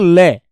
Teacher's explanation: ये दांत के पीछे हमारी जीभ है। जीभ के अगल-बगल से आवाज आती है इसकी ल की। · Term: पार्श्विक